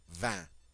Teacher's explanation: The G and the T are silent. That IN is the nasal sound.